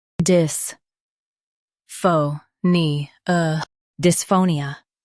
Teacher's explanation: Stress pho and keep nia soft.